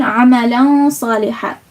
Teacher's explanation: So there's 3 things you have to do. Conceal some of the noon sound, make the sound come from your nose, so make it a nasalization, and lengthen it for 1 second.